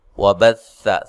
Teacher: سا کو نرم ادا کرنا ہے، لمبا نہیں کرنا.